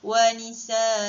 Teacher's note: cara bacaannya hendaklah dibaca dengan panjang dengan kadar 2 harakat